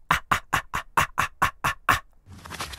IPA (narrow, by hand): ʔ̥-ʔ̥-ʔ̥